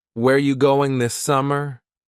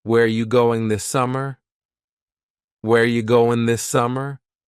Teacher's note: Where ya, which is you, going, dropping the G.